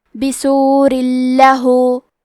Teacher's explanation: لام حروف الادغام بغیر غنہ میں سے ہے، تو ہم تنوین کو لام میں ملا کے بغیر غنہ سے لیکن تشدید کے ساتھ یہ حکم کو ادا کریں گے